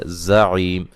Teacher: اس زا کو سختی سے زور سے پڑھیں گے، سیٹی سے پڑھیں گے، عی یا مدہ ہے، عین کو واضح نکالیں گے، وقفاً بڑی مد کے ساتھ پڑھ سکتے ہیں۔